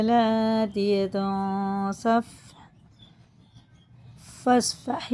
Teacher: اس کی نون کی آواز کو ناک میں لے جا کر ایک الف کے برابر پڑھنا ہوتا ہے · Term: غنہ اور اخفاء